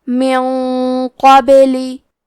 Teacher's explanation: اخفاء کا معنی ہے چھپا دینا، تو ہم نون ساکن کو چھپاتے ہوئے اور غنہ کے ساتھ یہ حکم کو ادا کریں گے. کیونکہ غنہ ہمیں اگلے والے حرف کا حکم لیتے ہیں تفخیم میں اور ترقیق میں، اور حرف القاف حروف التفخیم میں سے ہے، تو ہم یہ غنہ کو تفخیم سے ادا کریں گے.